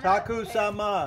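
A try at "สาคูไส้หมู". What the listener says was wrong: Sai mu. Sai ma mai dai. Ma is dog. It ma is dog. Sai mu. M O O.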